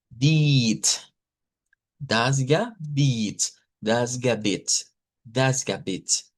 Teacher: Esto es para decirnos que esta no es como no es solo la I, sino que hay que prolongarla, hay que hacerla larga